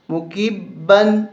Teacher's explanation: غنہ نہیں کریں گے کیونکہ پیچھے عین حرف حلقی ہے